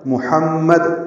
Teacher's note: ہا وسط حلق سے ادا کریں گے، میم مشدد پہ غنہ کریں گے